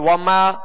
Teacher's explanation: بس ناک سے جو آواز گزری ہے یہ غنہ ہوا